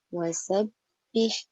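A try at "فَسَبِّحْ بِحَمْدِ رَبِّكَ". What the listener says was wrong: Fa. Bukan wa. Fa. Fa bukan wa.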